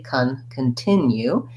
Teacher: the unstressed first syllable the c-o-n in this word actually doesn't say an o sound it says vowel schwa sounds like a so i'll rewrite that as c u n